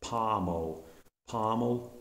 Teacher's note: O in the closed syllable in American English is pronounced as an open ah sound